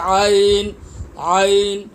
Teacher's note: عین کی ادائیگی حلق سے ہوگی